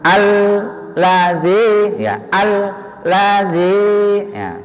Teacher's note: Alladzinya jangan tergesa-gesa. Ditekan dulu baru masuk ke la.